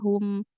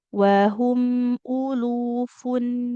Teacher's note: Ah ya hum, sama di kata hum juga gitu. Hu-nya maju bibir kita. Kemudian masuk ke mim sukunya hum. Nah, tarik bibirnya ya.